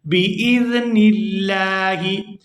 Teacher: یہاں پر لفظ اللہ کے لام کو باریک ادا کیا جائے گا کیونکہ لفظ اللہ کے لام سے پہلے زیر ہے